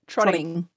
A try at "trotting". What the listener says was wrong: It's glottal stopped. I'm just waiting for it. I'm waiting for it. Where is it?